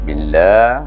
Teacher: lah tu maknanya panjang dua harakah, sama macam mat juga.